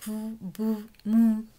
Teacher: un lugar de articulación que se va a llamar bilabial, porque intervienen los dos labios. Y el modo de articulación es oclusivo.